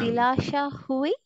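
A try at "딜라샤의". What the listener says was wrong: not hui, ui, ui. Dilasha ui.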